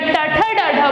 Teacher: जब हम री बोलते हैं या ट, ठ, ड, ढ बोलते हैं तो हमारी जीभ मूर्धा को टच करती है